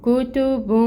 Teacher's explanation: بن، تنوین آ رہی ہے، پیش تنوین، اور اس کے بعد حروف اخفا میں سے قوف آ رہا ہے، تو یہاں پر اخفا ہوگا اور اس کی مقدار ہوگی 2 کاؤنٹس، ٹھیک ہے۔ کتب، ناک میں جو نون کی آواز ہے اس کو چھپائیں گے۔